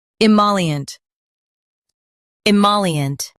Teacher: Stress moll and keep ient soft.